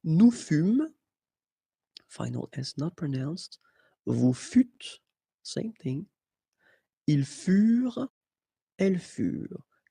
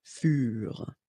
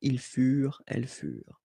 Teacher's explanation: Keep in mind that ENT, you know, the ending for the plural form is never pronounced, so furent.